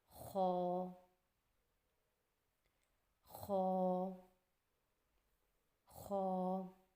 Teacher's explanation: خا کی ادائیگی میں زبان کی جڑ کو تالو کی طرف بلند کرتے ہوئے موٹی آواز میں پڑھیں